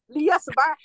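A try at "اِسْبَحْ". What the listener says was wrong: আরে আল্লাহ রে আসবাহ কেন ইসবাহ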